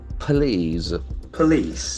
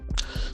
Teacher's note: The accent falls on the second syllable.